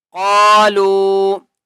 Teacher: قاف کو موٹا کر کے پڑھیں گے اور قاف کو ایک الف کی مقدار کھینچ کر پڑھیں گے